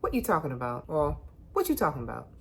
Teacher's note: you killing the vowel before you can even get to the T